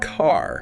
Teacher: In American English, the R sound is rotic, meaning it's usually pronounced strongly wherever it appears in a word, especially at the end.